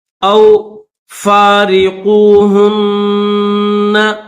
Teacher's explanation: نون کے اوپر غنہ کریں گے کیونکہ نون کے اوپر تشدید ہے